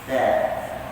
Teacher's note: kalau huruf sa, hujung lidah sentuh hujung gigi atas kan.